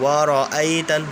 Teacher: را کو میں بالکل نہیں کھینچا، کیوں؟ کیونکہ را کے ساتھ الف نہیں، را کے ساتھ حمزہ ہے، کیونکہ الف کے اوپر حرکت آ گئی تو اب یہ حمزہ بن گیا.